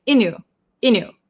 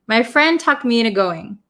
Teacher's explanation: if we're going to say very quickly we might skip over the t sound in into so sometimes when we talk fast it sounds like inu inu